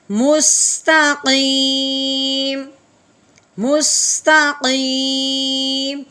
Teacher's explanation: تو جب اس کو ساکن کریں گے تو میم کی پوری آواز یعنی زبر والی آواز نہیں نکلے گی، بلکہ ہلکی سی آواز نکالیں گے